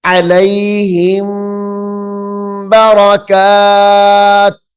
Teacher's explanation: غنہ کریں گے، کیونکہ میم ساکن کے بعد حرف با آ رہا ہے